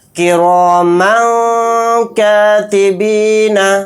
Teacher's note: میم دو زبر من کہتے ہوئے جو لاسٹ میں نون کی آواز آ رہی ہے اس کو ناک میں چھپا کر اخفا